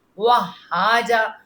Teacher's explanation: واؤ کو دانت اپنے نا ہونٹوں پہ نہ رکھیں، واہ نہیں کہنا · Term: ناتمام ہونٹوں کا ملنا